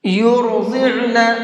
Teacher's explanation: را کو بھی اور ضاد کو بھی دونوں کو منہ بھر کے پڑھیں گے، اور عین کو حلق سے نکال کر کے پڑھیں گے